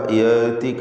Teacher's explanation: മാ ലം യഅതിക, യഅതിക ഹംസ യഅതിക എന്ന് ലൂസായി പോകരുത്, മറിച്ച് ഷിദ്ദത്തിൻ്റെ അക്ഷരമാണ് ഹംസ. യഅതിക എന്ന് വ്യക്തമാക്കി ഉച്ചരിക്കുക